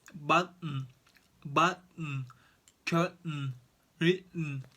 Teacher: Most Americans don't say these words with a puffy t. They say them with a sound that's like the beginning of a small cough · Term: glottal T